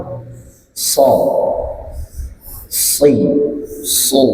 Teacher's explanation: সদকে আদায় করে নিচের দাঁতের গোড়া থেকে